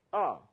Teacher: R is the 4th tone, falling.